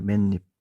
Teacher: 기본 형태에 없었던 니은이 생겼다는 걸 알 수가 있습니다. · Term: 첨가